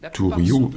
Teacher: donc en principe c'est t, avec une aspiration